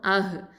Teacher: அடுத்தது அஹ்லு ஹம்சா ஃபதா ஹ சுக்கூன் அஹ். இந்த ஹம்சாவும் ஹவும் எங்கேருந்து வருது, அகசல் ஹல்குலேருந்து தான் வருது ரெண்டுமே